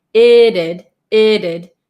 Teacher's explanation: it becomes um a flap T so it sounds like a d